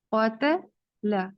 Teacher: اب یہاں قو پر ہے لیکن تا باریک ہے